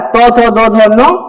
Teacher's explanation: दांत के माध्यम से जो है ये सब चीज का हम उच्चारण करते हैं। दांत के माध्यम से जीभ जो है दांत में टकराएगा। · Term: दंत व्यंजन